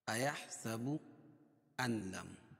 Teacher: نون ساکن کے بعد لام ہے اس لیے ادغام بلا غنہ ہوگا